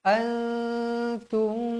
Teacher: Nun kosong bertemu ta ikhfa Hakiki dengung dua harakat